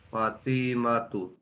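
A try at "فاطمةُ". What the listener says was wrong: Naam, baik. Ahsanta, barakallahu fik.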